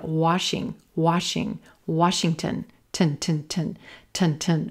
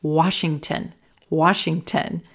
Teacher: Very quick reduced final syllable